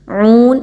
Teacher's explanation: جیعون، جیم زیر جی، جے کی آواز نہیں آنی چاہیے بلکہ جیم زیر جی۔ عون، واو مدہ ہے، عین پیش واو عو، دو الف کے برابر اس کی ادائیگی رکھیں گے